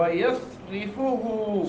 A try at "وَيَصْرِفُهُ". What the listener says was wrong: صاد آپ کا صحیح نہیں ہے،